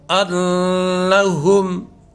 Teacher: نون مشدد ہے تو غنہ کے ساتھ ادا ہوگا